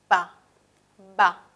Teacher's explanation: ambos son bilabiales porque los dos labios son los articuladores activos en esta articulación